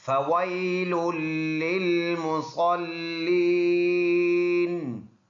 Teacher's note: یا مدہ ہے، ایک الف کی مقدار لمبا ادا کرنا ہوگا